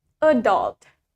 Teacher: Where in American, yang mana di aksen Amerika, the stress for the word adult is in the second syllable.